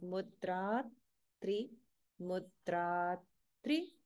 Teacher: notice again holding after dirgha, where the next sound is tri, which many people often miss.